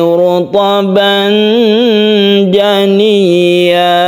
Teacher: Untuk roknya ditebalkan ya, karena dia itu berdhamma.